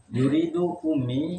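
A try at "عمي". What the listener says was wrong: Nah, pakai ain. Ya, kalau umi pakai hamzah. Pakai hamzah.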